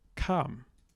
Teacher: in Dialect G, we lose that S before the aspirate, so kam. And I really like that.